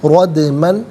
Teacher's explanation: را پر زبر ہے، را کو پر کر کے پڑھیں گے · دال ساکن ہے لیکن حرف قلقلہ ہے تو آواز لوٹتی بھی محسوس ہونی چاہیے، رودمن، یہاں وقف پڑھیں گے تو رودما پڑھیں گے۔